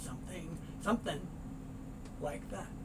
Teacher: Very often the G sound is not made, so you get something. Something, slightly different vowel sound when you get something, something like that.